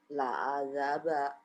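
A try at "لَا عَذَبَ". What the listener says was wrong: Enggak ada yang panjang ya Bu. La azaba. La azaba.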